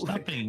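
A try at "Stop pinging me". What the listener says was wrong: didn't sound like ping. That did not sound like ping. It sounded like you said, "Who's pigging me?"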